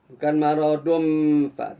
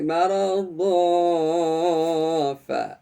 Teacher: Jadi bibir kita tidak mengatup, tidak bertemu nih bibir dengan gigi nih. Kenapa? Karena ya kita baru mengeluarkan bunyi ya nun yang disembunyikan. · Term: ikhfa